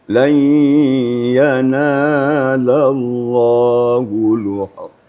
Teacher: Idgham maksudnya hanya dimasukkan suara nun ke dalam ya sambil menggunakan, mendengungkan. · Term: idgham bi gunnah